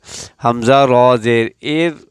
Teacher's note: इस रा को अब बारीक पढ़ेंगे क्योंकि ये उसूल है कि अगर रा साकिन से पहले ज़बर या पेश हो तो उसको मोटा पढ़ा जाएगा और अगर ज़ेर हो तो उसको बारीक।